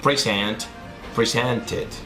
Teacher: Como el verbo present termina en t, entonces la terminación ed en ese verbo que termina en t va a sonar it.